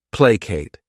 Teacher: This word has 2 syllables, and the stress is on that first syllable.